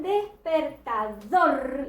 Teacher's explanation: Mientras que en despertador, la sílaba tónica la reconozco por la intensidad, por el sonido, ¿sí? Yo sé que el acento está en dor porque es la sílaba que suena con mayor intensidad